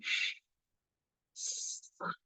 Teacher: of articulation so the curved nature of it tells you that this sound has a hising quality sh and the the the place tells you that it's actually